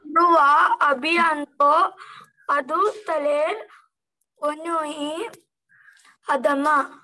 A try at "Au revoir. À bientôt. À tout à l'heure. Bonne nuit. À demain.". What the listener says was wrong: Très bien, très bien.